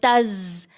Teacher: تیز آواز ہے، جیسے یہ تز، دانت جڑ جاتے ہیں نا، دونوں دانت جڑ گئے اوپر والے نیچے والے، زبان پیچھے چلی گئی تو تیز آواز، شارپ ساؤنڈ پیدا ہوتی ہے